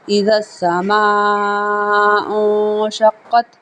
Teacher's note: کیونکہ یہ مد متصل ہے، اور یہاں پہ نون ساکن ہے، نون ساکن کے بعد آگے شین ہے، یہ حروف اخفا میں سے ہے، یہاں پہ اخفا ہو رہا ہے